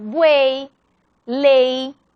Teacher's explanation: el caso de la Y, que funciona como vocal en final de palabra y se pronuncia como I